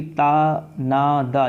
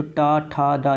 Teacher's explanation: तो टा वर्ड जो है वो उच्चारण की दृष्टि से देखा जाए तो टा ठा डा यानी कि ये मूर्धा होता है, यानी कि ये बेसिकली ता ना दा ये आपके दंत्य वर्ग के हैं, लेकिन टा जो है आपका ये दंत्य वर्ग का नहीं है।